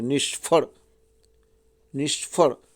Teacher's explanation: સ ને ફ જોડાક્ષર હોવાથી પહેલો અક્ષર ની લઘુ છે, પણ તેની પછી આવેલો સંયુક્ત અક્ષરના ઠડકાને લીધે તે ગુરુ બને છે. જુઓ, ક્ષ અને ફમાં થડકો લાગે છે, નિષ્ફળ, નિષ્ફળ બોલજો તમને ખ્યાલ આવશે.